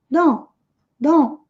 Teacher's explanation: Muitas vezes eles não pronunciam esse T na palavra don't e dizem simplesmente don't, don't.